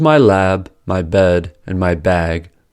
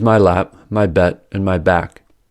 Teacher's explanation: The way to distinguish between these two sentences is through the vowel length, since the vowel lengths are unaffected by the devoicing. So, the vowel length of words with originally voiced consonants is noticeably longer even though their final voiced consonants are devoiced. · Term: Devoicing of voiced plosives